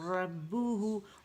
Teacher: ہونٹ گول نہیں ہوں گے، اگر میں کہوں نا ربہ تو آواز بالکل بدل جائے گی